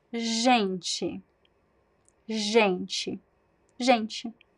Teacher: They sound, it's similar to the sound sh, the sh sound, but but voiced. So it's not sh, it's zh, like in the word pleasure, right? Measure. It's the same sound. · So the stress is at the beginning, the second to last syllable, right? And then the TE could be gente, but I say gente.